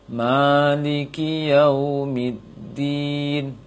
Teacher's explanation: Bibir tetap monyong ketika waw, namun tidak tertekan, tidak ketat dalam pengucapan waw sukunnya.